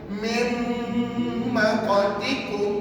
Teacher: Yang kita baca nanti adalah bunyi huruf mim yang bersatu. Nak sebut mim kita kena tutup bibir.